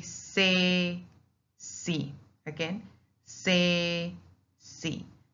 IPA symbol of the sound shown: s